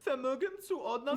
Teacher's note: pronounce the V's with an F sound, like in the word Vermögenszuordnung